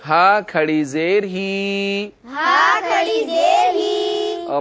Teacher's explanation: آپ کو بتایا گیا ہے کہ جس حرف کے نیچے کھڑی زیر ہوتی ہے اس حرف کو ایک الف کے برابر کھینچ کر پڑھتے ہیں یعنی لمبا کر کے پڑھتے ہیں